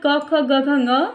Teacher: अ, क, ख, ग, घ, ङ, ह और विसर्ग इन सभी का उच्चारण स्थान क्या होता है? कंठ होता है।